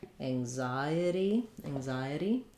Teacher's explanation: anxiety is um stressed on the Zai syllable um and the N says the NG sound so thinking about · um so thinking about that like I itty and again here our T is a flat because it's between two vowels not followed by a stressed syllable · the N says the NG sound so thinking about it like Ang like an angle or hanger